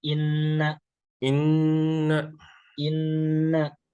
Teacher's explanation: Gunnah itu dengung. Berarti ketika nun posisinya gunnah, maka keluarnya itu dari khayshum, rongga hidung.